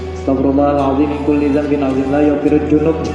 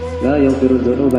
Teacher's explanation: pakai za itu ujung lidah, ujung lidah letakkan di ujung gigi atas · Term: za makhrajnya